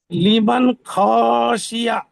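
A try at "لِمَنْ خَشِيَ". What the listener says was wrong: বানান করে পড়েন, খ টান দেবেন না, বানান করে পড়েন। লাম জেরে লি, মিম নুন জবর মান। মান। শিন জেরে শি। ইয়া। লিমান। লিমান।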